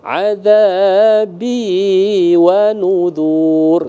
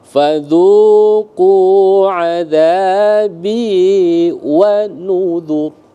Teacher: Satu ketukan semua itu. Ya, jangan diayun. Kalau terayun dia maka dianggap panjang.